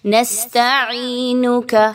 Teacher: سین سیٹی کی آواز کو لائیں گے